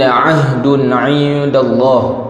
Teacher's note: Ahdun tanwin bertemu dengan ain, tidak ada dengung, kerana ain adalah huruf halqi ataupun huruf halqum.